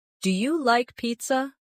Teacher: Make sure your voice rises at the end.